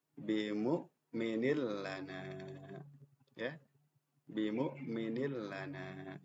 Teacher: Nin kasr tanwin berhadapan dengan la langsung melebur kepada huruf lam